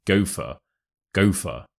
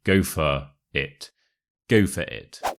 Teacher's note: the word go and for kind of merge together as if they were one word